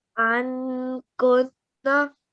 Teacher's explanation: أن كنا Okay, so the noon sakin in this case is only slightly pronounced. Instead of saying a clear noon sound, an, we say slightly, take your tongue slightly back from your teeth and say instead of an. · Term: ikhfa